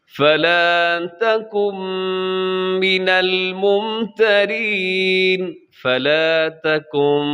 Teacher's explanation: یہاں نون ساکن کے بعد میم، یہاں بھی ادغام ہوگا لیکن غنے کے ساتھ ہوگا